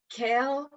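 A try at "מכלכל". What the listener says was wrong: So close. The first chaf first one doesn't have a dot, so it's chaf.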